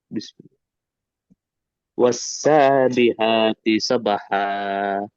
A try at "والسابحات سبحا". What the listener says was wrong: ہا کا مخرج تھوڑا اچھا ادا کریے. والسابحات سبحا.